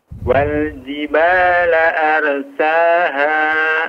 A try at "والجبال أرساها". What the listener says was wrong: sama ra-nya ditebalkan, arsaha.